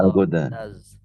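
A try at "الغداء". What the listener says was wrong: Nah, al-goda ya ada hamzahnya. Al-goda.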